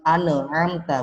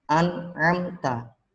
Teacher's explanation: An'amta, dan nunnya nggak boleh mantul, bukan amta, bukan, tapi an'amta.